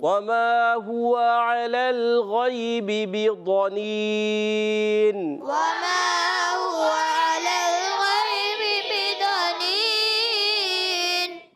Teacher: واو کی ادائیگی، واو ادا ہوتا ہے ہونٹوں کی گولائی سے. واو پر زبر ہے، کھینچنا نہیں.